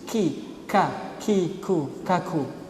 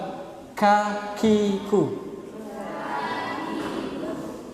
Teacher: kaf ini hamas, sifatnya hamas ya. Berdesis